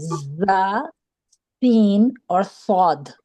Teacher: تو یہ وہ حروف ہیں جس میں سیٹی کی آواز آتی ہے، زا، سین اور صاد، ٹھیک ہے.